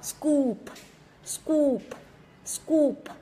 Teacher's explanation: Đọc scoop xong rồi đến âm p bật ra